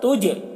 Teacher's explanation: دیکھیے جیم میں قلقلہ ہو رہا ہے